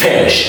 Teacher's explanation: F is fricative and longer and is unvoiced, so you put more and more energy, you push a lot of air outside, then it becomes fish. And remember, the last sh sound is also really important.